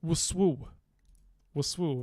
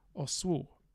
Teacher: And this w, this initial w, gets made syllabic and becomes oswu